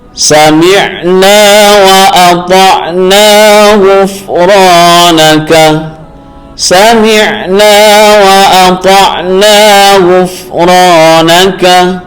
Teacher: ro ini berharokat fathah lalu bertemu dengan alif maka dibaca mad tabi'i